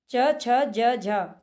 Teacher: जब हम इनको बोलते हैं तो ये हमारी तालु को स्पर्श करते हैं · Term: तालव्य वर्ग